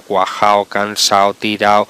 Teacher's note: Todas las palabras que terminan en ado o ido, en un nivel coloquial de la lengua quitamos la D, no la pronunciamos